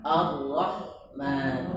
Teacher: Huruf ra ini takrir. Takrir itu dua getaran, jangan terlalu berlebihan.